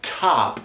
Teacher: most American speakers are going to do a fairly strong aspiration on that first tee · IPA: tʰop